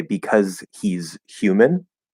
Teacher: At really fast speed, you just drop that H, connect the Z. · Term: drop the H